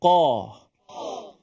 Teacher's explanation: makna kita sebut qaf tu mulut kita sekadar kita menyebut baris atas qo bukan kita sampai membulatkan mulut atau memuncungkan mulut Ko ha itu tidak tepat tidak secara bahasa secara orang Arab